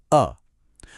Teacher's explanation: जब जीभ बीच में एकदम रिलैक्स रहती है तो बनता है मध्य स्वर